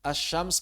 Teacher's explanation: Karena kita juga mengidgamkan lam ke huruf berikutnya saat membaca kata asyams. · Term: lam syamsiyah